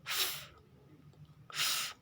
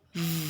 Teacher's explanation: Tapi untuk huruf V, bunyinya adalah V. Ada getaran di situ ya.